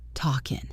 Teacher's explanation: Did you drop the G in talking?